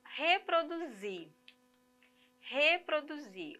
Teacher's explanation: a sílaba que sai com mais intensidade, nós já vimos aí que é a última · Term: oxítona